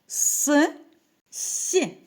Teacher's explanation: їх вимовляємо ротик напівприкритий утворюється щілина по якій проходить струмінь повітря при вимові виникає шум який нагадує свист